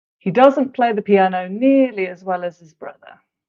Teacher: you often don't hear the H at all it's dropped